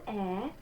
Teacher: we're going to say this letter Z like ts